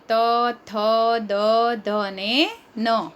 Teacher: એનો ઉચ્ચાર આપણે કરીએ ત્યારે આપણા જીભ જે છે દાંતને સ્પર્શ કરે છે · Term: દંત્ય વર્ણો